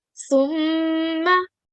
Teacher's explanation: So this is a rule of Gunna, as we can see, Mim Mushaddat. So when we join Sa to Mim Mushaddat, we need to do some slight nasal sound.